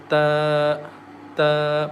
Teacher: Ta comes from the tip of the tongue when we touch to the front teeth as ta, ta. Please repeat after me.